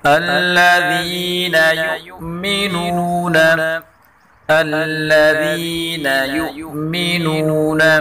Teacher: الذین، ذال کو نرمی کے ساتھ پڑھیں گے۔ یؤمنون، ساکن حمزے کو جھٹکے کے ساتھ پڑھیں گے، اور واو مدہ کو ایک الف کے برابر کھینچ کے اور پڑھیں گے۔